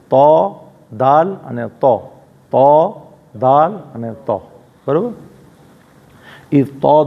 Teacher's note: जुबान की नोक ऊपर के दो दांतों की जड़ से अदा होते हैं